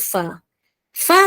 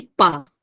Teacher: bibir satu huruf ini hanya menggunakan satu bibir apa Hurufnya iaitu huruf Fa yang mana gigi atas pada perut bibir bawah